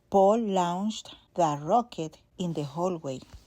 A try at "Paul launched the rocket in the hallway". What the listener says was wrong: Paul launched the rocket in the hallway. So her pole was very rounded. It doesn't need to be so rounded in English. It's just Paul, but not Paul, sticking the lips forward. And launched is a short back O, not a long OU, as she might have guessed from the spelling.